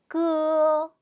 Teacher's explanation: 혀뿌리 쪽 안쪽에서 이렇게 긁는듯한 소리예요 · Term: 혀뿌리 소리